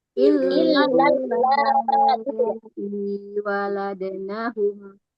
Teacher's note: maksudnya di illal di situ jangan terlalu lama alnya